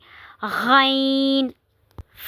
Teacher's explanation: جہاں سے ہا ادا ہوتا ہے وہاں سے عین بھی ادا ہوتا ہے، یعنی کہ حلق کے درمیانی حصے سے، جسے وسط حلق بھی کہتے ہیں. غین، غین بھی حروف حلقی میں سے ہے. یہ بھی ادنا حلق سے ادا ہوتا ہے